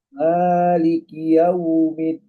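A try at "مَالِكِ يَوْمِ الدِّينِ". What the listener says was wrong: Cuman saya kurang mendengar ada huruf ujungnya. Seperti bacanya Malik Yaumiddi langsung putus gitu. Jadi berikan dia jelaskan huruf ujungnya yang berharokat wakof. Kita wakofkan maka dia menjadi sukun. Maliki yaumiddin.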